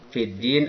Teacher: Lamnya tidak dibaca masuk ke dalam dal. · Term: alif lam samsiyah